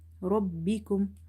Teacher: Ra is heavy because it's having fatha. Ra ba fatha kasra bi, rabbi kaf mim damakum, rabbikum.